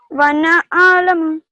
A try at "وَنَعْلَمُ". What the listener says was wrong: No, the ayn doesn't have fatha. The ayn doesn't have any fatha. It has sakun. So you would pronounce it as وَنَعْلَمُ.